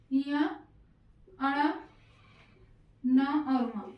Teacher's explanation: जिन वर्णों के उच्चारण में श्वास या हवा मुख और नाक दोनों से निकलती है उन्हें नासिक वर्ण कहते हैं।